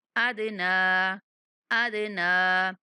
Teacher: دال پر کلکلا کریں گے اور نون کا کھڑا زبر ادا کریں گے